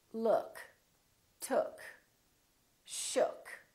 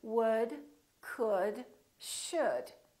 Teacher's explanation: for the neutral sound, the lips are very slightly rounded